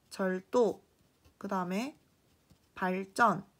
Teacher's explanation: 이 두 단어는 모두 한자어인데 여기 앞에 리을이 뒤에 예사소리와 만나면 각각 된소리로 발음되는 것입니다.